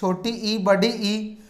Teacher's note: तालव्य स्वर ये वो स्वर है जो कंठ से ध्वनि आकर तालु भाग का स्पर्श करती है